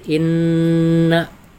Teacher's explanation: Terus inna dibaca lama karena dihukumi ghunna musyaddada